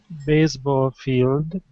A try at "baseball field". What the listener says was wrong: Okay, base. That's an unvoiced S.